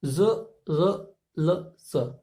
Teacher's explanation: जो दांतों की जड़ है उनसे हमारी जीवा स्पर्श करती है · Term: दंतमूल